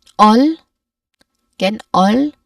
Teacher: This is the long o sound. Your mouth should be more open and your lips are slightly rounded.